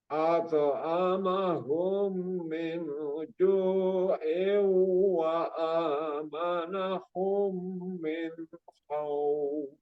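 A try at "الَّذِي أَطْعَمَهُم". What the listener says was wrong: Alladzi ato. Nah, jadi ato bukannya ada desisan, nggak ada desisan. Dia nggak punya sifat hamas itu huruf to, tapi memantul. Memantulnya itu sempurna kembali ke hurufnya, ke huruf to. Jangan ate itu jangan. Tapi ato. To lagi larinya ke to. Kalau ate jadinya huruf ta, bukan to ya. Jadi alladzi at'amahum min ju'.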